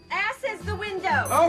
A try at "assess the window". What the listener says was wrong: It's assess the window, not ass is the window. You put the wrong emphasis on the wrong syllable.